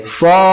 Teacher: Kemudian sod, sodnya panjang 6 harokat